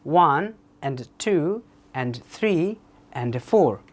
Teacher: বলবো 1 and 2 and 3 and 4 আপনি দেখেন 1 যেগুলো নাম্বার আছে সেগুলোকে একটু জোরে বলছি উইথ বোল্ড সাউন্ড আর যেগুলো এন্ড আছে সেগুলোকে লোয়ার টোনে উচ্চারণ করছি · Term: স্ট্রেস